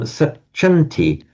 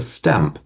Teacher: the nasal, the n or the m and the ng, are changing to be the same as where the next consonant is